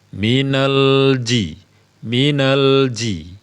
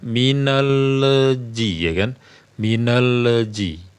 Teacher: dalam keadaan menyebutkan lam ya masih dalam keadaan menyebutkan lam nah supaya tidak menjadi qalqala biarkan dulu dia menempel sampai kita menyebutkan huruf Jim